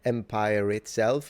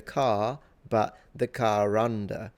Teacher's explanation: sometimes British people will pronounce an R as a liaison, as a connection, even if it's not there. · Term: the ghost R